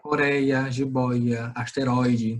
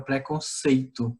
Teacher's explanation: Coreia, jiboia, asteroide, todas essas sílabas são pronunciadas de forma mais abertas no nosso aparelho fonador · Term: ditongo aberto